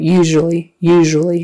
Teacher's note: it's voiced all the way through